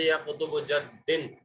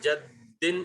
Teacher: تشدید کا اس لیے ذکر کیا ہے میں نے کیونکہ تشدید کے اندر بھی پہلا جو حرف، تشدید حقیقتاً تشدید کے اندر 2 حرف ہوتے ہیں ایک ہی جیسے، یعنی جیسے یا قطب جدن، اب یہاں پر 2 دال ہیں، 2 دال ہیں، جبھی اس کی آواز جدن ایسے نکل رہی ہے سختی کے ساتھ، جن میں سے پہلا دال ساکن اور دوسرا دال جو ہے اس کے نیچے 2 زیر ہیں۔